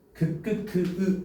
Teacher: 혀의 뒷부분과 열린 입천장 사이에서 나는 소리래요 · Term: 열린 입천장 소리, 여린 입천장 소리